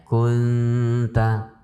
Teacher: Yang tersisa hanya sifat dengungnya nun, sementara makhrajnya itu sudah berpindah kepada makhrajnya ta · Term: ikhfa